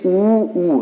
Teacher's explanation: आपके दोनों होठ जो है वो थोड़ा गोला टाइप बन रहे होंगे तो उसी को हम कहते हैं ओष्ठ